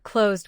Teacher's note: Close ends with a voice Z sound, so closed finishes with D.